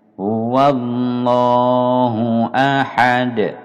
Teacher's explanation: antara hu dengan a ini langsung, tidak boleh mempanjangkan hu-nya.